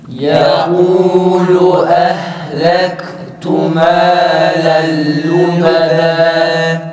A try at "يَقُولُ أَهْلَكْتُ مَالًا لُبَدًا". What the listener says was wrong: Yalnız ötürelerde dudak olmuyor arkadaşlar. Bu kaf bir de ta ve benzeri harflere hala alışmıyoruz. Ehlektu yoksa kalkale gibi olur. Ehlektu yukarıdaki mesela ehad gibi. Bunu kalkaleden ayıran şey önce nefesi ve sesi ikisini de kesiyoruz.